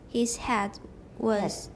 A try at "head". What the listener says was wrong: head. It sounds like hat. You're going ha.